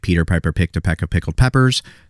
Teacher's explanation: those P's, you're actually pushing a lot more air out, and it's just like this puff of air. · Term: plosives